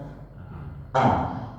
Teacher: Kalau kita bacakan, kalau kita berikan harokat, kita bacanya a. Harus ada suara yang tertahan dulu baru keluar a. Dan dia berada di yang paling dalam sebelum h. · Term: huruf alif